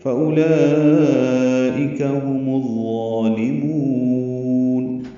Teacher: شمسی ہوگا، الف لام نہیں پڑھیں گے، ضا پر پڑھیں گے، لام باریک پڑھیں گے اور میم کو لمبا کریں گے